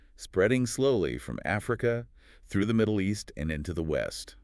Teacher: Usually your voice goes up for each item in the list and then falls on the very last one. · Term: Pattern C